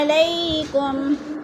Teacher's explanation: علی میں یلین ہے، کم میں اظہار شفوی ہے